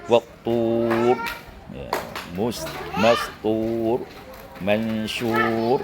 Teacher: Ini ra' dibaca tebal, di mana dia itu sukun